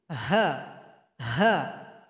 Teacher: Ada bunyi hamas, nafas yang mengalir ketika membacanya. · Di mana keluarnya? Yaitu tenggorokan paling bawah. Jadi bunyi hurufnya seperti orang mengeluh. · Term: huruf ha